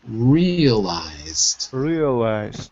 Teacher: we don't roll the R so you've got to make it really smooth